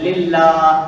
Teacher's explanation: پہلے زیر آ جائے للہ، اب باریک پڑھ رہے ہیں